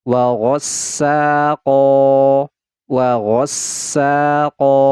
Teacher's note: huruf yang berharakat fathah tanwin setelahnya Alif kecuali tamarbuto nah ini Mad Iwat dibaca panjang dua harakat